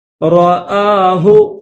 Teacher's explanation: حمزہ کے اوپر کھڑا زبر ہے تو ایک الف کی لمٹ میں کھینچیں گے